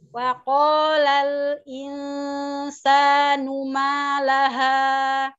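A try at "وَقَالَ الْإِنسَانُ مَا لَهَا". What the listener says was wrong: Naam, ahsan.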